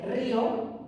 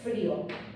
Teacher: Bueno, pues lleva esto tilde para marcar que la fuerza de voz está en la vocal débil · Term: hiato raro